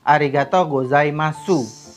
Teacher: Jika ada huruf u di akhir kalimat itu biasanya dibaca tipis